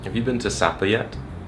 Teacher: he had a very steady rise